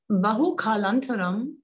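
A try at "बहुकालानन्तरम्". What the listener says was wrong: anantaram. Yeah, the anantaram and antaram, you have to get that difference because their meaning is different.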